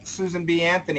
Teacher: Susan B. Anthony. It's all the same tone.